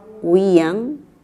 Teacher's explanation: cuando silabeamos, separamos la I de la A. Y la tilde va por esa razón, porque presenta hiato acentual.